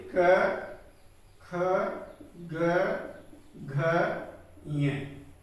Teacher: जब हम क वर्ग का उच्चारण करते हैं जो ध्वनि है वह कहां से? कंठ से निकलती है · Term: कंठ्य व्यंजन